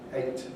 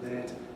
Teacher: 8 with a diphthong, late with a monophthong